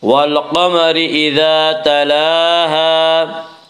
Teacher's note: والقمر اذا الف مدہ، الف ہمیشہ مدہ ہوتا ہے، الف سے پہلے ہمیشہ زبر ہوتا ہے، الف مدہ کو ایک الف کے برابر کھینچ کر پڑھیں گے